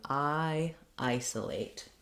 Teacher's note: So first of all, when we look at the verb isolate, we have clear vowels for the I, the letter I and the letter A, and a reduced vowel for the letter O. The stress is on the first syllable, so letter I says the I diphthong